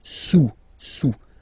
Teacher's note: Don't pronounce the final S, and then this OU combination of vowels is pronounced OU, okay? Sous, sous.